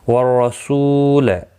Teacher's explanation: را زبر کی وجہ سے پر پڑھا جائے گا، سو واو مدہ ہے، ایک الف کی مقدار کے برابر کھینچ کر پڑھیں گے۔